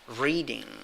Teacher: that is a long stressed e so to speak · The first sound, the first vowel sound, is stronger than the second one.